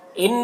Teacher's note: ان نون مشدد ہے، غنہ ہوگا